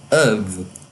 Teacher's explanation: Of é então pronunciado of, com schwa